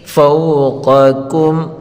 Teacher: پہلے قاف کو پر پڑھیں گے اور دوسرے کاف کو باریک پڑھیں گے۔